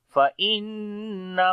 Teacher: نون کے اوپر شد ہے، غنہ کریں گے